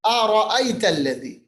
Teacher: لین مطلب نرم آواز کرنا تلذی ذال کو نرم پڑھیے گا ذال کا مخرج ہے زبان کی نوک ثناء علیا اوپر کے دانتوں کا کنارہ